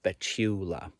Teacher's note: I was taught in school when I was studying Spanish that the stress should go on the penultimate syllable